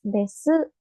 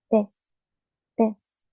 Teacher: Este kana su, cuando está al final, tampoco se pronuncia la U. Si está en el medio, sí, pero si está al final, no. · Por ejemplo, en el verbo des no es desu, sino que es des, des. La U desaparece, ¿no? Siempre que está al final.